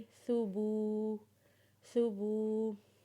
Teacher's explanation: जब बा को वाव के साथ मिलाएंगे तो इसे एक अलिफ के बराबर खींचेंगे